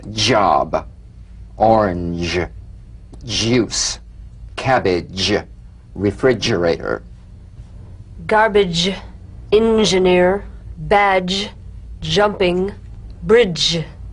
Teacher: feel a voiced percussive sensation flowing from the hard pallet onto the gum ridge.